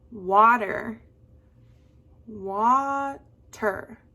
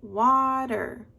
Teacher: there's an accent on one of the syllables so on one of the syllables your voice goes up and then it goes down maybe it goes down and then up but one of them